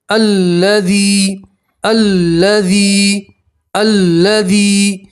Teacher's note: یا مدہ میں ایک الف کے برابر کھینچتے ہیں